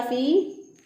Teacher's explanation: फी ये या मद्दा है, एक अलिफ के बराबर इसको भी लंबा करेंगे।